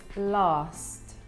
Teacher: where they are from London we tend to have a longer A sound in words such as last